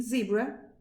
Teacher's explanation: s as in snake and z use the alveolar region of the mouth.